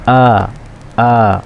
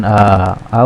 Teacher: huruf hamzah ini bersumber dari pangkal tenggorokan jadi suara a ini bersumber dari pangkal tenggorokan